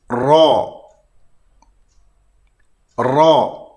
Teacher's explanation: Ra dibaca tafkhim terdapat lengkungan di tengah lidah. Berbeza dengan Ra dibaca tarqiq, tiada lengkungan. · apabila menyebut huruf Ra tafkhim, iaitu Ra dibaca tebal, kelihatan pangkal lidah ini naik ke atas, hampir mengenai daging lelangit, dan berlaku penyempitan ruangan untuk menghasilkan suara ataupun udara untuk keluar.